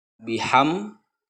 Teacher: apabila mim bertemu dengan huruf dal, maka cara membacanya harus jelas. Biham, dan bibirnya itu tertutup ya. Biham karena mim itu berada di bibir ya, makhrajnya keluar hurufnya di bibir. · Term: idhar safawi